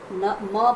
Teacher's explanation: कहीं हम नाक का उपयोग करते हैं, न म बोलते हैं, न बोलते हैं तो नाक का उपयोग करते हैं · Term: नासिक्य